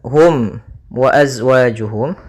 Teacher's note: maka ini kita namakan dengan hukum tajwid berupa izhar syafawi maka suara mimnya harus dibaca dengan jelas tidak boleh ditahan